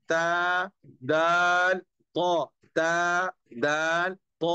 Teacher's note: हम जुबान की नोक को जब सनाया औलिया की जड़ में लगाएंगे तो उससे ता दाल तो अदा होते हैं